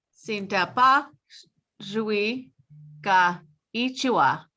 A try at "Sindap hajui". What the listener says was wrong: Just say that H in Sindap hajui.